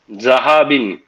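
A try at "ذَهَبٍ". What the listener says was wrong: না, জাল, জাল পাতলা হবে, যাহাবিন, নরমালি বলেন যাহাবিন, যা হয়ে যাচ্ছে, এটা হবে না, যা, যা, না, এই যে জিহ্বাটা বের করে, যাহাবিন,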